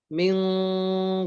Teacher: ikhfanya nempel ke pangkal lidah. Min bunyikan sempurna bunyi angnya. Min tahan 2 harokat.